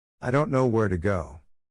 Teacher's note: son pronunciadas con mayor claridad, por ser dos verbos y un adverbio. Mientras que las palabras funcionales, I. Don't. To. por ser un pronombre, un verbo auxiliar y una preposición, reducen su sonido. · Y notemos en el siguiente ejemplo, que significa, no sé a dónde ir. Como las palabras, No. Where? Go. son pronunciadas con mayor claridad, por ser dos verbos y un adverbio.